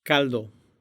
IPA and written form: ˈkal̪.d̪o (caldo)